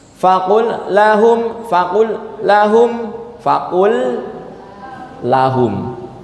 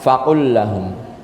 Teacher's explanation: Lam sukunnya diidghamkan ke lam selanjutnya.